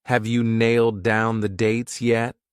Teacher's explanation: I said have you, but a lot of native speakers reduce you to just a ya.